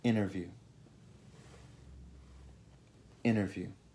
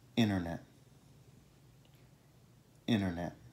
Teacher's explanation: Generalmente la T e la N sono così vicine nella bocca che la T può semplicemente scomparire. Prova a ripetere. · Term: La T silenziosa